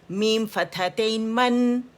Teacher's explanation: نون آپ کو سنائی دے رہا ہے، لکھا ہوا نہیں ہے. ایک حرکت میم کی ہے، ایک حرکت جو ہے وہ نون جس کے اندر چھپا ہوا ہے، ٹھیک ہے، سکون کے ساتھ ہے.